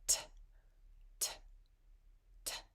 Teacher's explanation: together so when you make a t T you'll notice that it's very breathy right it doesn't have a lot of tone to it it doesn't have the vocal cords coming together to create that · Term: unvoiced consonants